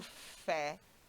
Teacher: quando você pronuncia o fé aparece com mais força e aberto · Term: oxítona